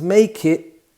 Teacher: because it's a glottal stop so we don't hear the t